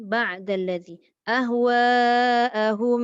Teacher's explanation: Salah satu contoh sifat yang paling ketara antara mim dengan ba, apa beza dia? Mim ada gunnah, tapi ba dia tak gunnah. Ba tak ada dengung. Tapi ba tu ditolak selepas mendengungkan pada mim.